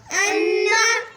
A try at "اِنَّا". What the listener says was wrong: حمزہ زیر نون ان، نون زبر نا رکنا ہے یہاں پہ، رکے. شد ہے تھوڑا سا سٹاپ کرنا ہے یہاں پہ تاکہ سواری بیٹھ جائے. بس رکتی ہے تھوڑی سی، سواری بیٹھتی ہے فوراً چل پڑتی ہے.